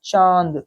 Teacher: अब देखिए उच्चारण में चा बोलते समय नाक और मुंह दोनों से ध्वनि निकल रही है। ठीक है, तो ये होता है अनुनासिक।